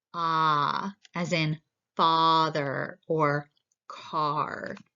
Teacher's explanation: Your tongue is going to be close to the bottom of your mouth. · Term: low vowels